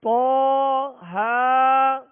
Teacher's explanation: طہ کو پر پڑھیں گے، حروف مستعلیہ میں سے ہے